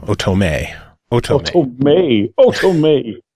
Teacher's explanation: The emphasis on the third syllable.